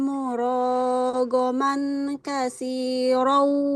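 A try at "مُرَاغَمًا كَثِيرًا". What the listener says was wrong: Tidak murogoman. Kalau tanwin ketemu kaf jadi ikhfa ya. Murogoman kasiron wasa'ah.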